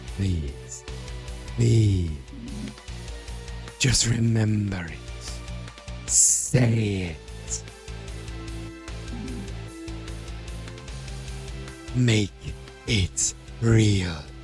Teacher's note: Doing that voice makes me really lightheaded because it's really breathy.